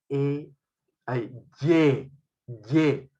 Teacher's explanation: el dorso de la lengua va hacia la zona palatal hacia la zona del paladar